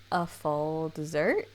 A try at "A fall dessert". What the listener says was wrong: It sounded like you said a full dessert. A fall dessert.